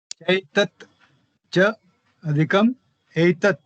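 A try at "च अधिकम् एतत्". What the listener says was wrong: Cha adhikam etat, not aitat. Cha adhikam etat.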